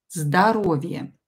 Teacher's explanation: Здоровье is health. This O is not stressed, so pronounce it as A.